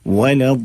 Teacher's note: वलद पढ़ना है इसको, वला नहीं, वाव को लाम को मोटा नहीं करना है, वला वालिन बल्कि दात को आप जो है मोटा करेंगे, वाव और लाम अलिफ को नहीं करेंगे